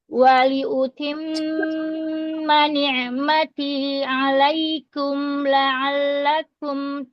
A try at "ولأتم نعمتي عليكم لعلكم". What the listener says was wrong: Kalau membuka fathah itu jangan ditarik. Ana perhatikan kalau membuka fathahnya agak ditarik ke belakang ya bibirnya. Tidak, rahangnya. Nanti mempengaruhi kafnya doma tadi. Ya, alai, rahnya turun bawah. Rahang bagian bawah. Jadi jangan ditarik fathahnya supaya setelah fathah ada huruf doma. Nah ini domanya nggak terpengaruh. Jadi kayak tadi ya kurang sempurna kum ya.